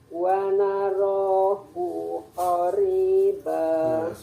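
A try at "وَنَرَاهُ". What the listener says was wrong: Punya pendek. Wa narahu punya pendek.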